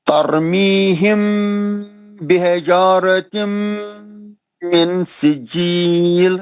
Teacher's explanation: نون کو چھپا کے اخفا کرنا ہے, غنہ کرنا ہے